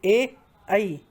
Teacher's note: कंठ तालु मतलब कंठ और तालु दोनों से उच्चारित किए जाते हैं